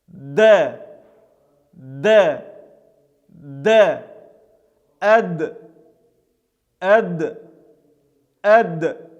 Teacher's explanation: Буква Даль произносится, когда мы кончик языка прижимаем к внутренней кромке передних зубов и, соответственно, к верхнему небу, и затем отрываем язык. Этот звук является смычным и звонким, произносится с участием нашего голоса, и этот звук является мягким, поэтому читается через Э.